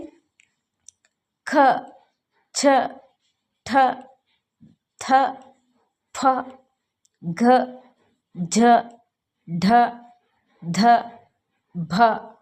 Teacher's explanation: ಹೆಚ್ಚು ಹೆಚ್ಚು ಉಸಿರಿನಿಂದ ಉಚ್ಚರಿಸಲಾಗುವ ವ್ಯಂಜನಗಳನ್ನು ನಾವು ಮಹಾಪ್ರಾಣ ಅಕ್ಷರಗಳು ಅಂತ ಹೇಳಿ ಕರೀತೇವೆ ಈ ಅಕ್ಷರಗಳನ್ನು ಉಚ್ಚರಿಸುವಾಗ ನಮಗೆ ಸ್ವಲ್ಪ ಹೆಚ್ಚು ಉಸಿರನ್ನು ತೆಗೆದುಕೊಂಡು ಉಚ್ಚರಿಸಲಾಗುತ್ತದೆ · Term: ಮಹಾಪ್ರಾಣಾಕ್ಷರಗಳು